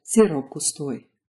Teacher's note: if you combine it with gustoy, you get sirop gustoy. That p turns into a b. Basically, if you see multiple words in Russian, you can often treat them like one long word and apply pronunciation rules accordingly.